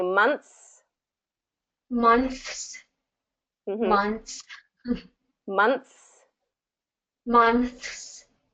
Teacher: you're going to do the voiceless th and then the voiceless s so basically your tongue is going to be between your teeth